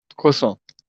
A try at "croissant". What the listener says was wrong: The T is silent. So you don't say croissant with a T. You say croissant.